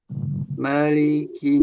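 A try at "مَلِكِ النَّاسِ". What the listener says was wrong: Nah, yang malikin nas linnya pendek ya, tidak dipanjangkan, tidak malikin nas. Kalau di surah Al-Fatihah maliknya ada yang panjang riwayatnya, qiraahnya ada yang pendek. Kalau di anak ya dia pendek. Malik, malik, malikin ya sebenarnya di tasdid ditarik. Nas, silnya tajam ya di akhir sil.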